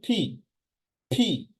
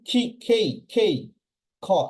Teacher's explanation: সো আপনি যখন ফি বলবেন তখন দেখবেন মুখ দিয়ে বাতাস বের হবে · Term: এসপিরেটেড সাউন্ড